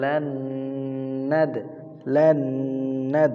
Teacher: ঈদগামে বা গুন্নার হরফ। গুন্নার সহিত মিলায় পড়িতে হবে তাসদিদ দিয়া। লান তাসদিদ ঈদগামে বা গুন্না।